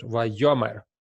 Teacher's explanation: the accent falls on the first syllable of the root